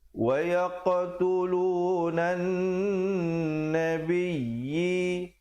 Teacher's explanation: Nun di situ bersabdu, jangan lupa dengungkan, wajibul gunnah 2 harakat. Wa yaqtulunan nabiyyi 2 harakat.